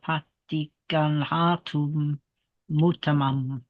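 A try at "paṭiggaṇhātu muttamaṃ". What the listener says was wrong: That was pretty good, but just emphasize the doubled consonants a little bit more. It is quite important to emphasize those doubles.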